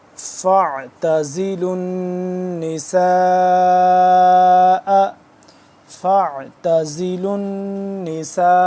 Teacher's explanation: لام کے بعد واو ہے، نہیں پڑھا جا رہا، حمزہ بھی نہیں پڑھا جا رہا، یہ حمزہ بھی نہیں اور یہ لام بھی نہیں.